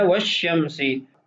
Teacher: مثال ہے والشمسی، اب یہاں پر لام کو نہیں پڑھا جا رہا، شین کو ادغام کی صورت میں پڑھا جا رہا ہے